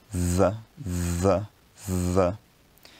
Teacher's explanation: It's interdental because the tip of the tongue is between the two rows of teeth, and it's a fricative because the air produces friction over a period of time as it comes out of the mouth. · The sound th is a voiced interdental fricative. It's voiced because your vocal folds are vibrating when you pronounce it, and you can feel that as a buzzing if you touch your Adam's apple or where it would be.